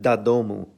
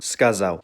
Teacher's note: Notice how the sound drops off at the end as to not form a full syllable. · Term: short oo